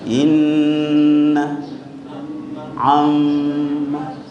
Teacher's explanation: Namanya bunyi hidung berarti ada getar suara tertahan di hidung.